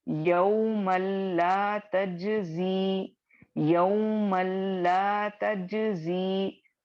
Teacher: Completely इसको मर्ज कर रहे हैं लाम में, जिसकी वजह से तनवीन की आवाज आपको बिल्कुल नहीं आ रही है। ठीक है, टोटल मर्जिंग हो गया है, कामिल मर्जिंग हो गया है, और ये आपको गुन्ने के बगैर आवाज आएगी, बिकॉज लाम गुन्ने का लेटर नहीं है। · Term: इदगामे ताम बिला गुन्ना, इदगामे ताम